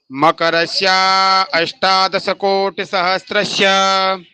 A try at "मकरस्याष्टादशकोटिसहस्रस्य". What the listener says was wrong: फिर यहाँ अष्टा आप क्यों अलग करते हो? आप मकरस्या फिर अष्टा क्यों बोलते हो? मकरस्याष्टादश कोटि